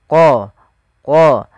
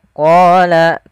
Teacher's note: lafal bacaan qala qala ini tebalkan huruf qnya qo dari mana makhraj daripada huruf q yaitu pangkal lidah kita menempel dengan langit-langit atas maka qo qo maka qola kemudian Q kita panjangkan sepanjang dua